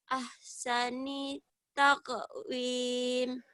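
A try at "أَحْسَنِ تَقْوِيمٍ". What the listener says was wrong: Ahsani takwim, bukan takwin, mau kawin si Wiwin. Takwim, bunyi M. M. Ahsani takwim.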